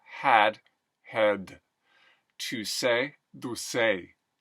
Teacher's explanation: So really helpful for me when doing the Arnold is to make sure the D's and the T's are really dentalized, really exaggerated dentalization of D's and T's.